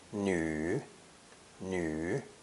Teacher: pronounced e with rounded lips